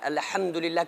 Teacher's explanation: الحم میں جو ہا ہے اس کو بیچ حلق سے نکالنا ہے،